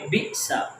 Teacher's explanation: اسی طرح بی سا، یہ حمزہ کے اوپر جزم ہے تو ہم اس کو جھٹکا دیں گے